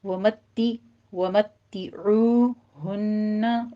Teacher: ومتعوہن میں بھی تا کے اوپر تشدید ہے، سختی کیجیے اور نیچے کسرہ کی آواز باریک کرنی ہے، ومتے نہیں کہنا، ومتعوہن، عو میں عین وسط حلق سے ادا کرتے ہوئے واو مدہ ادا کرنی ہے